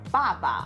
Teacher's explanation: the second syllable is neutral tone and it's not as dark as the first part and it's also shorter in duration